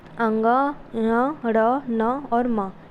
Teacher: फेफड़ों से उठने वाली वायु मुख के साथ नासिका से भी बाहर निकलती है, इसलिए इन वर्णों को नासिक के वर्ण कहा जाता है।